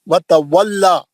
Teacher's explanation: दोनों वाव अच्छे पढ़ेंगे, मुंह गोल करके, होंठ गोल करके